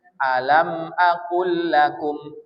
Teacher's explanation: Lam kedua berbaris. Maka lam pertama tak lagi dibaca, langsung lam keduanya ditasdidkan. Jadi lam pertama itu dimasukkan ke lam yang kedua. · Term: idgham